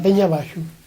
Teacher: En realidad eso dice peñe más que peña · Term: rasgos orientales